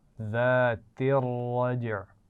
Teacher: ज़ाती, ये भी आसान लफ्ज़ है लेकिन ये आगे मिला कर पढ़ा जा रहा है। ज़ातिर रज्अ, तो रा मोटी पढ़ी जाएगी